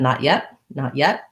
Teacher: when the next word starts with a consonant like the glide i use a stop so i say not my tongue goes up and yet my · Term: stopped t's